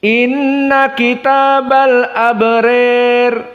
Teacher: alabrir dibaca dalam keadaan Al imalah alkubro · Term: al-imalah al-kubra